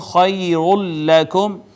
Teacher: ما قبل دیکھا تو نون تنوین تھا، ادغام ہوا ہے نون تنوین کا لام میں، ادغام بلا غنہ، پھر میم ساکن پہ پھر اظہار شفوی۔